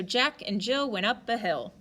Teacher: jill is heavy right we put a lot of stress we put a lot of emphasis on it · this one has a pretty natural rhythm because it goes stressed unstressed stressed unstressed stressed unstressed stressed